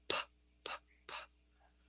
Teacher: when you say p, p, p, you are not using your larynx. So we call that unvoiced. Unvoiced. P is unvoiced.